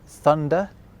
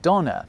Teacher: where English developed a th sound in certain words, German went off in a slightly different direction and ended up with a d sound instead